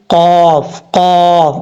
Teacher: زبان کی جڑ اوپر والے تالو کے نرم حصے سے لگے تو قاف پڑھا جاتا ہے دو نقطوں والا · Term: دو نقطوں والا قاف